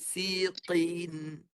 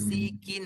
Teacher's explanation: Qaf pangkal lidah tinggikan. Siqin, tebal. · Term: qaf tebal